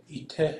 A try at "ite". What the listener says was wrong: Doesn't that need to be high tone, the E T?